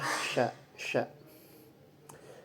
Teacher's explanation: Gori adalah bagian lidah. Kemudian dalam tariqatul khuruj al-hawa dia termasuk ihtikaki juga, yaitu adanya gesekan. Dalam wadul autar atau pita suaranya ketika diucapkan itu mahmus, adanya getaran.